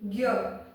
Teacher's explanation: मैं ग का उच्चारण भी कर रही हूँ और य का भी कर रही हूँ। तो आपके 2 साउंड हो गए, 2 व्यंजन पता लग रहे हैं आपको, ग और य। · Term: संयुक्त व्यंजन